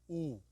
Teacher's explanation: ऊ है वो जीवा पीछे जा रही है ना, पीछे सिकुड़ रही है, और पीछे का भाग है ना वो सक्रिय होगा